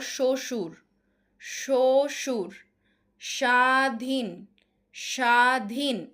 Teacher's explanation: শব্দের শুরুতে বফলার উচ্চারণ হবে না।